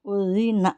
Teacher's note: زبان جو ہے ہماری سامنے آئے گی، سامنے کے جو اوپر کے جو 2 دانت ہیں اس کے نیچے آئے گی